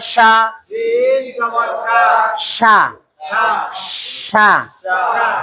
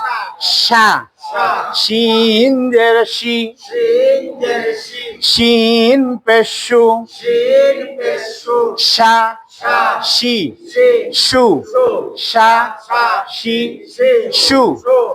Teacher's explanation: জিহ্বার মাঝখানটা উপরে তালুতে লাগাইতে হবে। হ্যাঁ, শা, শিন জের শি, শিন পেশু, শা, শি, শু, শা, শি, শু।